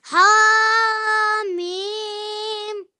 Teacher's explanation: Yeah, so ha for 2 seconds and mim for 4 to 6 seconds. So mim will be longer than ha because mim has madde kabir. Okay, this stroke here means you have to make it very long, extra long.